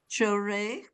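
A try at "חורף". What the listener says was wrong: That's a final fe again. So Rafe.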